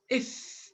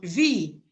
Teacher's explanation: if your upper teeth and your lower lip comes together so this is the place the place of articulation